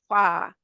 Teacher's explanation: वो हमारा जो ऊपर के दांत हैं वो नीचे के होंठ पे आ जाएंगे